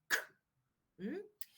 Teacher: the back of the tongue goes against the soft palate. And then the articulators open up abruptly, allowing the air to escape with an explosion, but without any vibration